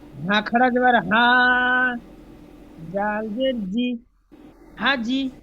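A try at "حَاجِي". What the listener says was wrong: হলো না। হাজি বানান করার সময় টান দিচ্ছি, ফের রিডিং পড়ার সময় টান ছেড়ে দিলে হবে না, প্রত্যেকবার টান দিতে হবে।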